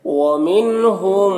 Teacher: नून मुशद्दद है तो नून में गुना होगा